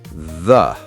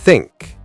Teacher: So TH in the is voiced and TH in think is unvoiced.